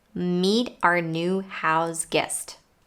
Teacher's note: the word hour when it's in a sentence and connected to other words of course it's reduced to r · When it's in a sentence and connected to other words, of course, it's reduced to are. When we connect meet to are, the T in the word meet becomes a flap T once again. The words new and guest are said casually, but they're not stressed, so it might be problematic to hear them clearly.